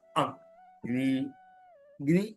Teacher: അഗ്നി, അഗ്നി എന്നിടത്ത് ഇകാരം എന്താണ്? അനുദാത്ത സ്വരമാണ്, താഴ്ത്തി ഉച്ചരിക്കണം. അഗ്നി, അഗ്നി എന്നത് താഴ്ത്തി പറയണം.